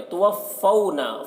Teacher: وَإِنَّ نون مشدد ہے، غنہ ہوگا یہاں پر، اور ماں میں الف مدہ ہے، اسے ایک الف کے برابر کھینچ کر پڑھیں گے۔ توفونا، فونا کے واو جو ہے یہ واو لین ہے، اسے نرم آواز کے ساتھ جلد پڑھنا ہے